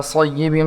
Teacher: सय्यिबिम साद को मोटा पढ़ेंगे, या से मिलाएंगे।